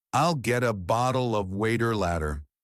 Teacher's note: Sometimes the T doesn't sound like a T at all. It sounds like a soft D. This is called the flap T, and it's one of the most native sounding features you can learn.